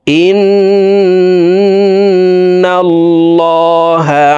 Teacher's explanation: দেখুন হরকতের বামে নুনে মিমে তাসদিদ হইলে সর্ব অবস্থায় নাকের বাসি থেকে গুন্নাহ করিয়া পড়িতে হয়। 3 সেকেন্ড পরিমাণ গুন্নাহ করে পড়ব। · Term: ওয়াজিব গুন্না